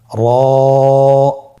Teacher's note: র হরফটি এখানে আমরা পোর করে উচ্চারণ করব, মোটা করে উচ্চারণ করব, এবং র হরফটি 1 আলিফ টেনে পড়ব। · জিহ্বার আগার উল্টা পিঠ তার বরাবর উপরে তালুর সঙ্গে লাগিয়ে উচ্চারিত হয়